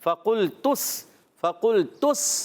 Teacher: सीन की अदा आएगी सीटी के साथ